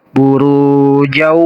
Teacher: cara bacanya harus menggunakan gunah atau dengung ditahan dulu dua harakat dari huruf idgamnya di sini huruf idgamnya wau burujau nah seperti itu burujau Wana